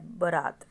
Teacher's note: बारात शब्द शुद्ध है इस इसमें जो आपकी उच्चारण है वह बरात बोला जाता है यानी कि आ की साउंड को नहीं बोला जाता है